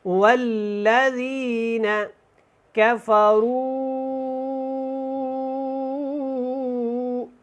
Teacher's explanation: میں نے مد کو کھینچ کے ادا کیا ہے کیونکہ یہاں پہ مد منفصل ہے